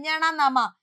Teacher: അനുനാസികം എന്ന് പറയും ഞണനമ ഈ അനുനാസികങ്ങളെയാണ് നമ്മൾ മൂക്കുകൊണ്ട് ഉച്ചരിക്കുന്നത് ഞണനമ അതായത് നമ്മുടെ നിശ്വാസ വായു വായിലൂടെ പോകുന്നതിനു പകരം മൂക്കിലൂടെ പോകും